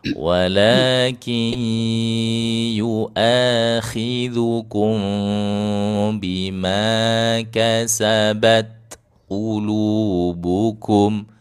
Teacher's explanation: Jangan buru-buru menghamaskan huruf ta itu. Enggak perlu buru-buru. Biarkan dia syiddah dulu baru kasih hamsnya.